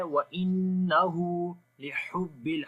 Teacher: ہا کو گلے کے درمیان والے حصے سے اور کلیئر آواز آئے گی